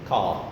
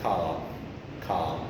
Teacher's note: It is long, it is low or open, and it is back, a back vowel. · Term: long, low vowel